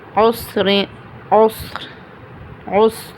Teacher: را جزم، اس سے پہلے جزم، اس سے پہلے پیش. تو یہاں پر را کی کیا ہوگی؟ تفخیم را.